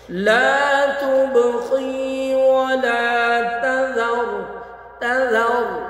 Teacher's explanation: با بھی ساکن آ گیا با کے اوپر جزم ہے تب با کی آواز لوٹ کے آئے گی یعنی ہاں ہونٹ ملیں گے ملا کے چھوڑ دیں گے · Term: قلقلہ